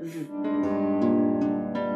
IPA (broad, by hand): v